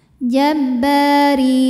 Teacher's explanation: Jabba ba Mad Thobi'i dahohiri karena ada Alif didahului baris fathah maka ba panjang dua harakat